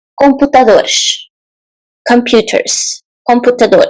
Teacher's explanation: so an s in the end sounds like sh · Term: the sound sh